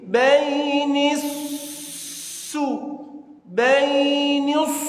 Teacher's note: Dan ketika menekan shad sukun bukan seperti sin, bainisu, bainisu, tebal. Jangan tipis, tebal karena huruf shad.